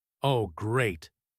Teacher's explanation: With a sarcastic stress on Great.